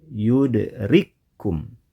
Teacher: Pada ayat ini kita menemukan dua huruf kaf yang dibaca dengan cara digabungkan menjadi satu. Cara seperti ini disebut dengan idgham, yudrikum.